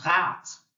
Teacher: a R from the throat sound